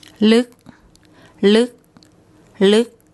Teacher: the K sound so the the initial consonant is low class it's a dead syllable because it ends with a K sound and this vowel is short · It's a dead syllable because it ends with a K sound, and this vowel is short. So when we look up the tone rules, that tells us it's a high tone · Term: higher tone